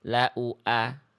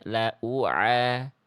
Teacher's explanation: Hamzah dari pangkal tenggorokan, ain dari tengah tenggorokan ya.